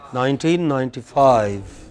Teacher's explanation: main stress will come on five